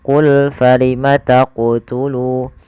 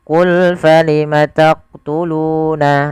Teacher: ketika melafalkan huruf qaf di sini harus memantul, yaitu qul falima taqtulu. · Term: qalqalah